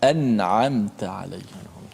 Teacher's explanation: Nun tu dibaca dengan izhar, dimatikan dengan betul, dengan menekan pada makhrajnya · Sebab itulah kalau orang tanya kenapa berlaku kena baca izhar sini, kerana huruf izhar dan nun mati itu dia huruf yang berjauhan. Jadi kita kena baca dengan jelaskan nun mati tanpa boleh kita memanjangkan.